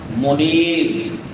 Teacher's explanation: نون کو لمبا کریں گے کیونکہ یا ما قبل کسرہ ہے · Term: یا مدہ